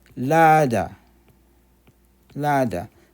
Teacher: So it's a D with H sound. So D, and then you end with an H